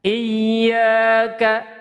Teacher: Oke, kemudian ayat kelima ada iya, ya-nya itu bertasydid atau syiddah. Ini agak ditekan. Kemudian dipanjangkan karena di situ ada mad tabi'i panjang 2 harokat.